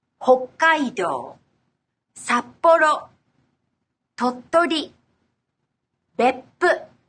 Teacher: the double consonants, also known as consonant lengthening. When transcribed in Romaji using the Roman alphabet, the double consonants are written with double K, double P, double T, among other double letters.